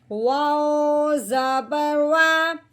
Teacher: واؤ کو ہم نے ہونٹوں کی گلائی سے ادا کرنا ہے، دانتوں سے ادا بالکل نہیں کرنا۔ آگے یہ زبر ہے، واؤ کے اوپر زبر لگی ہوئی ہے، کیسے پڑھیں گے، واؤ زبر وا۔